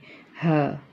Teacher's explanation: हलक के नीचे वाले हिस्से से हम इसको अदा करेंगे ह। Pronounced from the middle, pronounced from the bottom part of the throat.